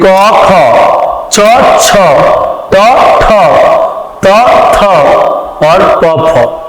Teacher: इन्हें बोलने में हमारी स्वर तंत्रियों में कंपन उत्पन्न नहीं होती और स्वर में तंत्रियों में कंपन उत्पन्न न होने के कारण ही इसे अघोष, जो घोषणा के बगैर हो यानी कंपन के बगैर हो, उसे अघोष व्यंजन कहते हैं।